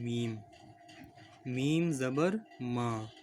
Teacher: میم کو ہونٹوں کے باہری حصے سے ادا کرتے ہیں